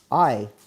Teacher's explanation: And finally, the long i, which is another diphthong or a moving vowel. So, we start low mid a up to high front i.